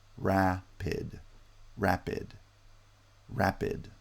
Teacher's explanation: so here you see a word that has two sonority peaks we rise from r to ah we fall to p and rise again to e and fall to d two sonority peaks means two syllables